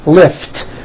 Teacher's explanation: Lift ends with an unvoiced T.